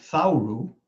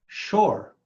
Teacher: th as in think in Hebrew that consonant merged with the consonant pronounced sh · because the consonants for th and sh merged in Hebrew the word takes the form shor.